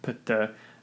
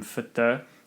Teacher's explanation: Now, we could then apply a process of dissimilation, as you see in the Norse languages, where pitta became fitta, so that the voiceless plosive p becomes a voiceless fricative to dissimilate it from the plosive characteristic of the following voiceless plosive